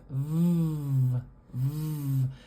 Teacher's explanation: for the V sound we're putting our top teeth on our lower lip